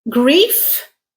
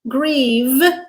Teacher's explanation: Grief with a f, which is unvoiced. Grieve with a v, which is voiced. Again, manner and place of articulation exactly the same for f versus v.